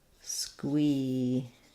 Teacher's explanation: Letter Q in squeamish says a qu sound. So we have squee, first syllable stress, squeamish.